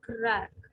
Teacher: includes a stop consonant with the letter k crack then pronounced the k leaves a lingering pause in airflow that adds emphasis